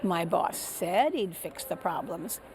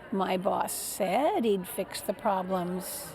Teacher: something about the word said is funny. It goes up and down.